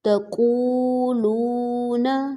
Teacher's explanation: اب یہاں پر دو واؤ ہیں اور دونوں مد ہیں دونوں سے پہلے پیش ائی دونوں کو برابر کھینچیں گے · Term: واؤ مدہ